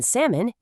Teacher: In salmon, you don't say the L.